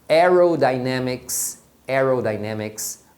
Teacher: basicamente você vai ter a é com som de é em palavras que tem a ver com ar